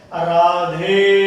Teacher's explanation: र में जो आ है वो दीर्घ स्वर है, पर ध में जो ए है वो पलुत स्वर हो गया है